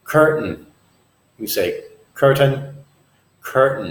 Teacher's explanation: say sometimes ooh say in American English we sometimes say curtain we use what's called a glottal stop instead of using letter T we stop our voice